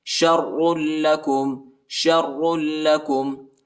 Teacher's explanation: شین کو را کے ساتھ ملائیں گے اور را کو شدت کے ساتھ سختی کے ساتھ پڑھیں گے, اور را کو لام کے ساتھ ملائیں گے.